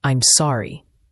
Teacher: I'm is a quick unstressed sound, and sorry has a clear o sound like in hot, and a light r sound. Try to say it smoothly and with feeling.